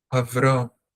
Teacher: For a split second, there's a e, but it's very short. Avram. This is called a silent shva in grammars.